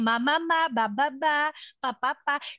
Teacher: ang mga bilabial sounds natin. So, yung p, b, tsaka kasi ginagamit ang lips.